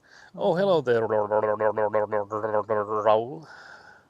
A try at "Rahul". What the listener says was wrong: Now you forgot the H.